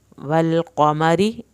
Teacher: میم کی زبر کو ہرگز لمبا نہیں کرنا